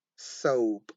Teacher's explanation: We don't have the aspiration rule there because the P is not at the beginning, it's in the end of the word.